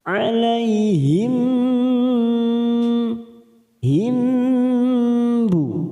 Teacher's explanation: Faqalub nu duma bertemu sukun 2 harokat, nu alaihim mim sukun bertemu ba. Biasanya mim sukun kita baca jelas, sekarang kita dengungkan selama 3 ketuk